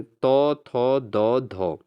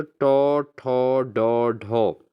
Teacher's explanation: तो तौ थौ दौ धौ दंत हैं दोस्तों, और टौ ठौ डौ ढौ मूर्धन्य होते हैं।